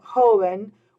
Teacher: I want the word to still be pronounced joven, with the stress being on that first syllable, like it was in the singular.